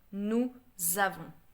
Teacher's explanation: Normally, nous avons. But because the S is not pronounced right, but because it's a vowel after, I'm gonna add a Z sound in between. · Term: liaison